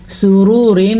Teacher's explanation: کیونکہ اس را کے اوپر پیش ہے تو یہ را پر پڑھی جائے گی، جبکہ اس را کے نیچے دو زیر ہیں تو یہ را باریک پڑھی جائے گی